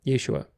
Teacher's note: it changes the vowel from an ah to an eh, which is really not a short eh, but a long a sound. It's a diphthong.